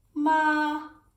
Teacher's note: And we have ma, and it goes up. That's the second tone. All right? Ma, like you're asking a question.